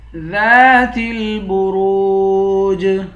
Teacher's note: آخر میں جیم ہے، جیم پر قلقلہ کریں گے۔